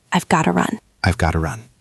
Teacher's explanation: We often reduce got to gotta.